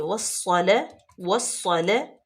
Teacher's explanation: سواد جو ہے وہ حروف شمسی میں سے ہے، تو اس لیے الف لام لام تعریف یہ سائلنٹ ہو جائیں گے۔ واو کو ڈائریکٹ سواد میں ملائیں گے، اور سواد مشدد بھی ہے، اور اس کو سختی سے بھی پڑھیں گے۔ اور تیسرے نمبر پہ یہ مستعالیہ ہے، اس کو پر بھی پڑھیں گے۔